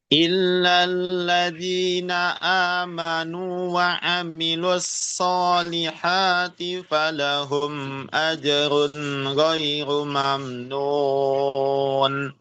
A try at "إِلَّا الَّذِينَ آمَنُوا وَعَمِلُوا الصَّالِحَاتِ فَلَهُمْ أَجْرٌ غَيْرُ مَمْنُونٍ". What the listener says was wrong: Tinggal huruf shadnya itu perlu ditambah lagi ya, tebalannya ya.